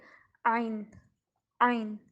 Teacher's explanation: عین حلقیہ لفظ ہے اور اس کی آواز حلق کے اندر سے نکلتی ہے